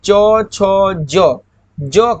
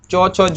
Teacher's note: तालु से बोला जाता है